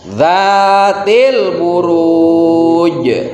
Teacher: kita membaca huruf yang sukunnya itu panjang karena ada huruf yang memerintahkan untuk dibaca panjang, yaitu wawu sukun setelah harokat doma.